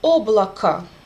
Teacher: the last letter O is reduced and it became a